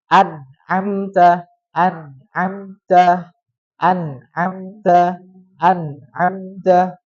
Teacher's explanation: hukum izhar, nun sukunnya itu tidak boleh dipanjangkan. · Apabila nun sukun bertemu dengan huruf-huruf halak. Nah, maka tingkatan gunahnya adalah naqisah, kurang.